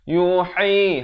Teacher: ha pedas di pertengahan kerongkong